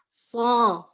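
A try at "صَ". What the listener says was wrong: Jangan harus terus seimbang. So, jangan so. Semacam so pertamanya betul, so keluarnya berubah. Harus konsisten, Bunda. So. Jangan ngaderek-dek. Jangan ngaderek. Relax aja, Bunda. Relax. So.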